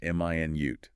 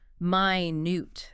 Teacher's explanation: Stress on the first syllable. M i nute. That's the unit of time 60 seconds